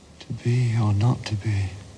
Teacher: we practically always deaccent the repetition